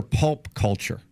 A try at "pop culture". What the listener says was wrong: you said pulp there's no pulp and culture